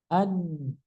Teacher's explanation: Nun tempatnya di ujung lidah nempel ke langit-langit.